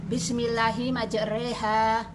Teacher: Imalah yaitu fathah dibaca pertengahan antara fathah dan kasroh